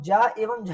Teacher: जब आप ज एवं झा करेंगे तो इसमें जीभ का बीच का हिस्सा आपके मूर्धा से टकराता है।